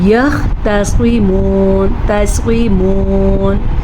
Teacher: تا کو باریک اور صاد کو پر